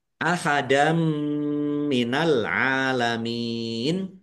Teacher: Fathah tanwin bertemu dengan huruf mim, idgham bi gunnah. Masuk dengan mendengung, yaitu mendengung mim, ditandai mimnya ada tasdidnya, ditahan biar tampak mendengungnya.